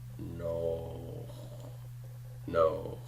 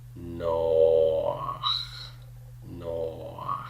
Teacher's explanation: So the sequence of the O followed by a very tiny A sound, both of those are coming before the het. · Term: furtive pathach